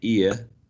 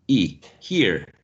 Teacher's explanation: A good example is, for example, here, in which in general, in received pronunciation, you have the diphthong ear ending with a schwa, ear, but in General American, you have e